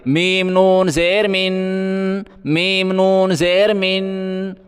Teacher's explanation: میم کو ہم نون کے ساتھ ملائیں گے اور غنہ کریں گے